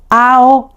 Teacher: We don't emphasis the o. We emphasis the a sound.